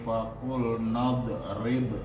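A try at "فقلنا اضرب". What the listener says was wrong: enggak boleh ada pantulan nadrib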